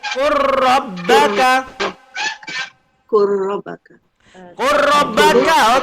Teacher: Jadi terus masuk ke bukan qul rabbaka tapi qur rabbaka.